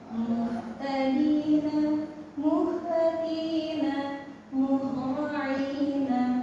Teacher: untuk H itu ada di tengah tenggorokan.